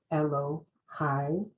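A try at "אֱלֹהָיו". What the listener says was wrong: Elohav. Okay, so in this case, that yud is silent. It's there for changing the nature of the word. plural. Elohav.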